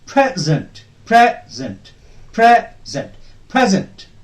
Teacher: when it is used as a noun uh the stress will be on the first syllable